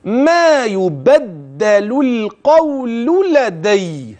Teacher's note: ها هي اللام مره ثانيه ولاحظ الترقيق فيها جيدا